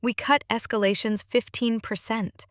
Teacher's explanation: Downward tone on cut escalations that anchors the benefit.